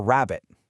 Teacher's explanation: It's that rolling r sound that kind of rumbles and vibrates in your mouth.